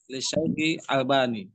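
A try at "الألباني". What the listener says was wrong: Al-Albani, Pak. Ya, Al-Albani. Karena kalau Albani jadi artinya dibeda. Nah, Al-Albani itu nisbat kepada satu daerah di sana Yordan, Albani.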